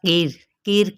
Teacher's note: یہ را ساکن جب ہو جائے گا تو ماں قبل اگر زیر ہو تو پھر کیا ہوتا ہے؟ را باریک پڑھا جائے